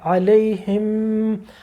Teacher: اب یہ دیکھیے یہاں پر کہ یہ آ رہا ہے علیہم، ہا کے نیچے جو زیر ہے وہ جا کے آگے میم سے مل رہی ہے، مشدد ہوا. ہونٹ بند کر دیجئے پورا اور ایک دم غنہ کیجئے، ناک میں لے جائیے